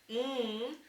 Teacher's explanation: an alveolar nasal made with the tip of your tongue and your alveolar ridge